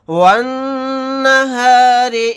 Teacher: نون کے اوپر تشدید ہے تو یہاں پر ہم غنہ کر کے پڑھیں گے، اس را کو باریک پڑھیں گے کیونکہ را کے نیچے زیر ہے۔